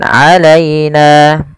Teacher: lembutkan pelafal ya yang didahului dengan fathah karena ia bacaan lin